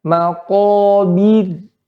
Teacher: Di sini ra sukun sebelumnya kasrah ya. Maka dia dibaca tipis.